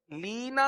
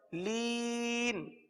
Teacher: حروف مدہ کے بعد جو نون پر زبر تھا اس کو ہم نے سکون میں تبدیل کر دیا وقف کی وجہ سے. لینا تھا، ہم پڑھ رہے ہیں لین. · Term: مد عارض